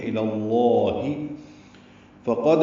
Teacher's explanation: قاف پر اور دال ساکن پہ قلقلہ ہے